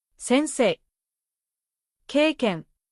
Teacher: Even though い is written, the sound is pronounced as a long え. You do not switch your mouth to an い sound. You hold the え sound longer.